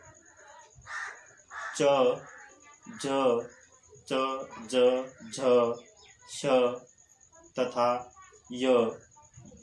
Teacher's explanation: जीभ का अग्रभाग जब कठोर तालु को स्पर्श करता है, साथ ही हवा को रोक देता है तब जिह्वा ध्वनियों का निर्माण होता है। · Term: तालव्य ध्वनि